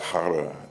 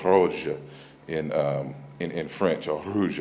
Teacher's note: like the R in French, it's like a guttural R, like hara, like when they say rouge in French, or rouge, I should say.